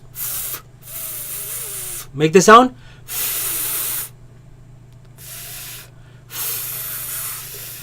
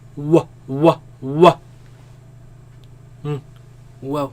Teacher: So the fa, use the teeth and the lip. Wow, you use both lips only.